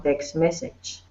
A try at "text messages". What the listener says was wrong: Okay, text messages. Remember to pronounce the S. Yeah, on the end of words.